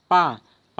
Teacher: पा का उच्चारण स्थान है ओष्ठ